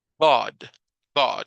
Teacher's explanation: sonido no existe en español nosotros lo estamos ahorita fabricando y es un sonido como que si se mezclara una a o una o verdad como que se mezclan un poquito y la pronunciación es God God no es God en español